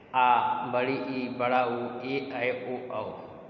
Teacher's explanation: दीर्घ स्वरों का उच्चारण करने के लिए ह्रस्व स्वरों से अधिक 2 गुना समय लगता है।